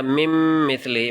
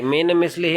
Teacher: نون کی آواز کو ہم نے میم کی آواز کے ساتھ ملایا ، کیونکہ نون سائلنٹ ہے، اس کے بعد میم جو ہے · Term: ادغام